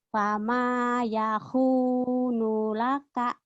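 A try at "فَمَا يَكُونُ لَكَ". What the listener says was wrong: Bukan Yahoo, ini ku, Yaku. bukan Yahoo ya. Yaku, Yaku, bukan Yahoo, Yaku. Ku ya.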